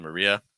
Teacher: Maria, finishing with a schwa sound at the end